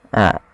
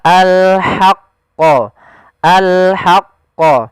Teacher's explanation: kita mengeluarkan dari tengah tenggorokan kita ha disertai dengan nafas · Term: huruf ha kecil